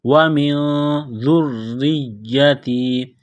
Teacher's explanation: نون ساکن کے بعد ذال ہے، حروف اخفا ہے، تو نون ساکن پر غنہ کریں گے